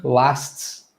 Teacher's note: We're transitioning from the S to the T, then to the S sound again. So that's a lot of movement that's going on inside our mouth with our tongue.